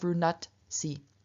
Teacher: And then secondly, the dh in front of the S loses both its voice and its aspiration. Dh is the voiced aspirated dental, and so it turns into the unvoiced unaspirated dental, which is t, and so we have runatsi.